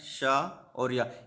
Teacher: तालु मुंह के भीतर की छत का अगला भाग इसमें यूज होता है। इसके अंतर्गत आता है शा और या। · यदि शा का पूछा जाएगा तो ये अघोष महाप्राण है, और या सघोष अल्पप्राण है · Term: तालव्य